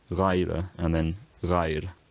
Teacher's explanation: This first lost the word final z, becoming Reiser, and then the z inside the word underwent roticization to become r, Reira. Next, the final vowel is weakened and lost